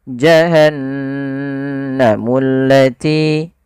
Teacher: Dia menandakan di situ bacaannya adalah bacaan gunnah. Gunnah yaitu membunyikan suara hingga masuk ke rongga hidung kita. Maka suara nunnya dimasukkan ke rongga hidung.